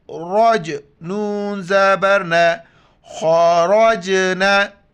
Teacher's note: را کو موٹا کر کے پڑھیں گے اور جیم کے ساتھ ملائیں گے ، جین پر کلکلہ کریں گے یعنی جھٹکے کے ساتھ پڑھیں